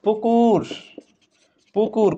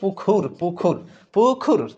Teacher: অল্পপ্রাণ থাকলে সেটাকে আমরা মহাপ্রাণ করব